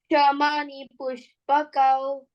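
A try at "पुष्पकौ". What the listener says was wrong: Not push. Push. Like a whistle, let the sh come out. Pushpakau.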